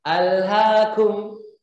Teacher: Jadi kalau di surah At-Takatsur walaupun disambung dari basmalah, hamzahnya tetap dibaca.